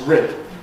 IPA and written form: rɪd (rid)